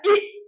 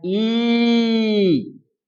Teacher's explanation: जब आप छोटी और बड़ी का उच्चारण करते हैं तो इसमें यही अंतर होता है। छोटी की मात्रा झटके में बोली जाती है और बड़ी की मात्रा खींच करके बोली जाती है।